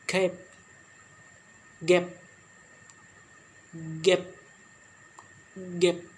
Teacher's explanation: These consonant sounds are produced when the back of tongue touch soft palate the velum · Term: Velar sound